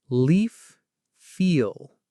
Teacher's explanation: A word like leaf that has a light L at the beginning. Leaf. The tongue tip goes up.